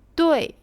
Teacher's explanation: Le D est proche du D français, mais prononcé de manière plus énergétique entre le D et le T.